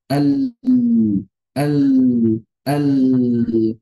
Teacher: Kita berbicara lam dulu, ujung lidah nempel, suara mengalir di sisi lidah. Al begitu. Sedangkan ta menutup rapat aliran suara, kemudian si suara itu difokuskan pada makhrajnya. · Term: inhiraf